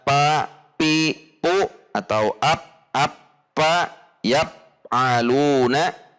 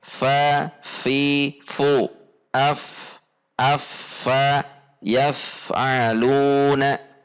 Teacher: yaitu pada ujung gigi seri atas ditempelkan bibir bawah bagian dalam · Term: huruf fa